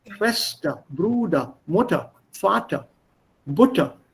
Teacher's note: That R is still there, but it's got merged with the vowel.